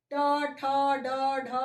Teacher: ये सभी मूर्धा से उच्चारित होते हैं, इसलिए इसे हम मूर्धन्य कहते हैं